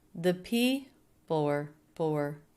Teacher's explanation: People being the most stressed, and then also really and friendly also being stressed. The and were, flat, low in pitch. The said quickly, unstressed.